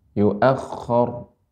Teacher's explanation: Kha-nya lah lebih banyak garukannya.